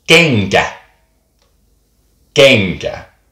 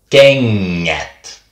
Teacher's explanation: if you want a long sound, it changes from NK to NG. Like when you take the word shoe in Finnish and make it plural, shoes, it becomes kengät.